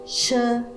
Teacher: This is pronounced as sh sound. It is made through mouth and it is unvoiced because we don't use our vocal cords to make the sound.